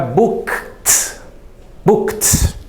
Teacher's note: Esses verbos eu vou pronunciar o ed com som de t, como se fosse um t.